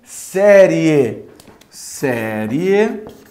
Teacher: semivogal é fraco vogal é forte então ele é crescente é uma vez que o som vai crescer o som vai ficando mais forte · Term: ditongo